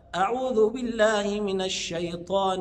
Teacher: صفه اسمها صفه التفشي او الانتشار اللي هي خاصه بالشين فيها هواء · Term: صفة التفشي